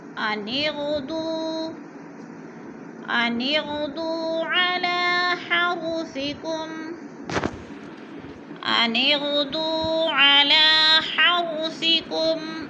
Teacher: غین پر پڑھا جائے گا، دو کو وہ مد ہے، تھوڑا سا کھینچ کر پڑھیں گے، دو الف کے برابر۔ علی لام کے اوپر بھی کھڑی زبر ہے، تھوڑا سا کھینچ کر پڑھنا ہے۔